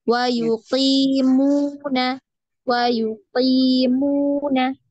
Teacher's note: mu-nya di situ panjang karena ada dhammah bertemu dengan waw sukun ya